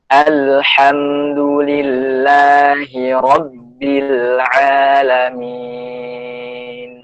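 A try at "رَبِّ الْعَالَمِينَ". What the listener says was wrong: Rabbnya lebih disiddahnya lebih dikuatin. Rabbil alamin. Hati-hati jangan sampai Rabbi. Jadi jangan masuknya ba warna p. Rabbi. Nah, itu bercampur. Rabbil alamin.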